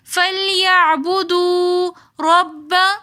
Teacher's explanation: ہم موٹا پڑھیں گے، آگے با مشدد ہے تو را کو ہم با کے ساتھ ملا کر پڑھیں گے